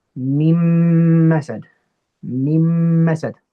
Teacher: So I've skipped the noon of that first min, okay? But I've maintained the ghunna and put it with the ghunna of the mim. I've merged the two together.